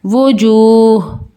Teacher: واو پیش وو، جیم واو پیش جو، وجو، ہا دو پیش ہن، وجوہن، آگے وقف وجوہ. وقف کی صورت میں ہماری یہ دو پیش کی تنوین اومٹ ہو جائے گی، لیکن ہا کی آواز آنی چاہیے. وجوہ.